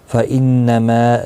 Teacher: ہوگا، را زبر کی وجہ سے پورا پڑا جائے گا۔ فَإِنَّمَا نون مشدد پر گنہ ہوگا ، ما الف مدہ ہے، ایک الف کی مقدار کے برابر